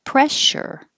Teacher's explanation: And the ch can get more relaxed into a sh.